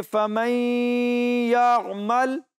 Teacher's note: چونکہ یہاں نون ساکن کے بعد یا موجود ہے، اس لیے ہم غُنّہ ادا کریں گے۔